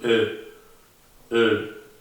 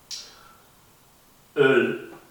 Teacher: Esta es una mezcla entre una O y una E. Entonces ponemos la boca como si estuviésemos pronunciando una O pero pronunciamos la letra desde más atrás, como si estuviésemos pronunciando la E